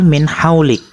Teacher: izhar halqi sebab huruf nun sukun bertemu huruf H cara membacanya adalah suara nun sukun dibaca jelas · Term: izhar halki